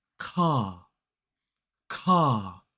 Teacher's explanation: in a word like car, which is C-A-R, as an isolated word, we don't pronounce the R. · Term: non-rhotic accent